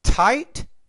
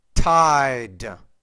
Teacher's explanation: you can make that T a little bit with more air